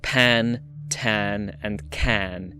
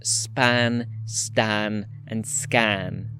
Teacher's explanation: If you put your hand in front of your mouth when you say "pan", "tan" and "can", you'll feel it. However, these stops are allophonically deaspirated after a syllable-initial fricative · small puff of air that we call aspiration